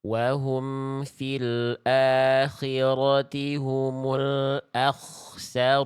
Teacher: Kho sukun huruf tebal. Kho ketika sukun tebal jadi lebih diangkat lagi pangkal lidahnya.